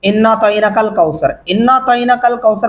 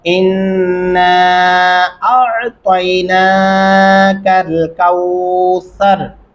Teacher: اعطینا آپ نے الف پڑھا عین نہیں پڑھا